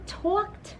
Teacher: Our suffix is ed, but it sounds like T. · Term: sound of T